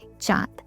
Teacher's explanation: नाक और मुंह दोनों की सहायता लेनी पड़ती है। इसे स्वरों से पृथक नहीं किया जा सकता। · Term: अनुनासिकता